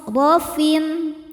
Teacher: ro kedua juga tafkhim karena berharakat fathah maka ro nya tebal · ada idzhar halqi karena ada tanwin kasrah menghadapi huruf kho. Cara bacanya tanwin dibaca idzhar atau jelas.